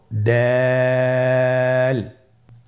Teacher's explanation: দাল হরফটি বারিক হরফ। এ হরফটি উচ্চারণ করার সময় আমরা অবশ্যই তিন আলিফ টেনে পড়ব।